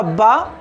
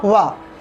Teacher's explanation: बा का है केवल दंत और वा का है दंतोष्ठ